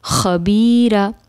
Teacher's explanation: خا ہم ادنا حلق سے ادا کریں گے